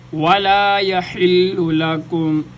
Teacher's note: واو کے اوپر ہونٹوں کو گول کیا جائے گا